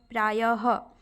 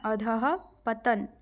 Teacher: विसर्ग ह का अघोष रूप है